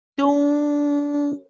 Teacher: you are pronouncing the wow at the same time so your lips should be circled for the wow so here we say don't see you can hear the wow